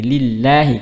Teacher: Lafzul jalalah karena sebelumnya kasrah maka jadi tipis.